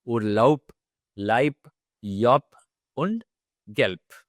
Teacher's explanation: the words ending with the letter B. The pronunciation will be more like P.